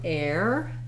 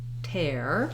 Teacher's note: the letters er actually say the air diphthong